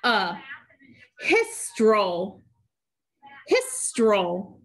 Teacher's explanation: between the first two consonants the i will get a brevi this e is actually getting the schwa sound because it's followed by an l